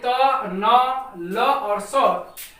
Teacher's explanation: तो जैसा कि आप देख पा रहे हैं दोस्तों कि दांत और जीभ के स्पर्श से ये त, न, ल और स अर्थात सभी वर्ण बोले जाते हैं